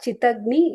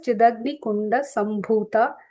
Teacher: And it's not Chitagni, it is Chidagni. It is Chit plus Agni, but when they're joined together, it becomes the softer Da. So it is Chidagni Kunda Sambhuta.